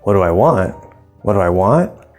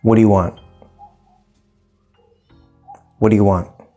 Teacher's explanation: we want to go down at the end so pay attention to that